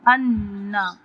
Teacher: نون مشدد ہے، اس پہ ہم غنہ کریں گے ایک الف برابر